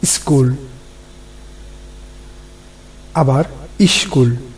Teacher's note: লক্ষ্য করো স্কুলের সামনে কিন্তু হ্রস্ব ই একটি ধ্বনি এসেছে। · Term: আদি স্বরাগম